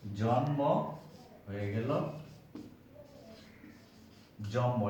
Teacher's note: এখানে জন্ম ম আছে, ওই মটার প্রভাবে আগের ন ম হয়ে গিয়েছে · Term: সমীভবন